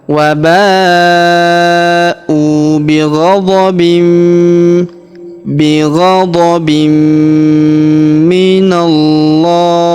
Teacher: tanwin ininya melebur masuk ke huruf mi. Kita tahan dan kita tekan serta kita dengungkan dua sampai harakat.